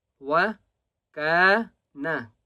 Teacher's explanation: کاف کو ایک الف کی مقدار کھینچ کر پڑھیں گے